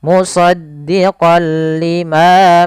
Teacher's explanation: ada fathatain bertemu dengan huruf lam awalnya kalau kita baca musaddiqon karena bertemu dengan huruf lam tanwinnya masuk ke huruf lam suara n-nya dihilangkan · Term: idgham